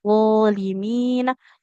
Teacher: Contohnya kayak huruf Do. Kan huruf D itu sifatnya suara mengalir tapi nafas tertahan ya. Widzimina. Jadi sifat aliran suaranya terjaga ya.